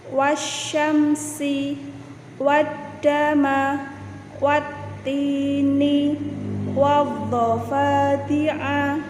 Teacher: alif lam syamsiyah lamnya hilang, tidak ada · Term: idgham syamsiyah